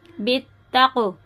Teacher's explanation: یہ حرف قلقلہ ہے، اس میں آواز پلٹیں گے